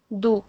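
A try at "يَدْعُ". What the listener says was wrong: کیونکہ عین کا نام لیا نا تو وہ بھی انکلوڈ ہوگا ہمارے ساتھ. اب عین کو الگ سے لام سے ملا کے پڑھیں. عین لام پین ال ہاں ہاں تو یہ دو پارٹ ہو گئے نا دونوں کو الگ الگ ادا کریں. یدع ون پارٹ ال سیکنڈ پارٹ.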